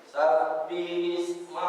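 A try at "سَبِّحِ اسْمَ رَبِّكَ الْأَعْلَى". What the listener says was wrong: Nah, di sini Pak, ha, hi. Bedangkan antara ha dengan ha. Ini makhrajnya ha ini di wasat, pertengahan, tengah tenggorokan. Jadi sabbihis hi, bukan sabbihi.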